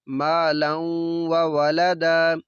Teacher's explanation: یہاں پہ غنہ بھی ہے، ادغام بھی ہے، نون تنوین کے بعد واو ہے، واو حروف یرملون میں سے ہے۔